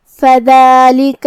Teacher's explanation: کلمت فَذَلِكَ حرف دال پہ کھڑا زبر ہے تو یہاں مد الف ہوا. ہم اپنی آواز 2 مد کے برابر لمبی کریں گے